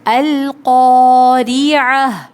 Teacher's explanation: قوف کے بعد الف خالی ہے، الف خالی سے پہلے جب زبر ہو تو الف مدہ ہوتا ہے، اس کو 2 کاؤنٹس کھینچیں گے۔ القاریعہ، را پہ زیر ہے، باریک پڑھیں گے، عین حلق سے ادا ہوگا، عین حلقیہ لیٹر ہے، اور یہ گول تا جب کسی لفظ آیت کے آخر میں آتی ہے تو اس کو ہا پڑھتے ہیں۔